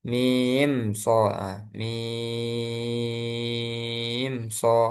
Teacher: Idhar syafawi. Kita baca jelas mimnya tanpa ditambah guna.